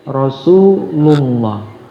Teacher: lafal Allah juga, lafzul jalalah, apabila sebelumnya berharokat doma, maka juga dibaca tebal